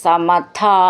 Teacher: ഇവിടെ വിസർഗമുണ്ട്. ദീർഘം പറഞ്ഞിട്ട് വിസർഗം പറയണം.